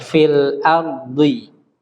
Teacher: Itu roknya tebal karena didahului fathah